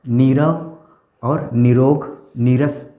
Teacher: यदि ई या ऊ के बाद विसर्ग आए और उसके बाद र आए, तो ई और ऊ दीर्घ हो जाते हैं और विसर्ग का लोप हो जाता है।